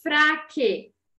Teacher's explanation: Se eu escrevo aqui para vocês fraque, para fazer o que, eu coloco o que, o e, mas eu não escuto o som do u, eu escuto apenas o som do e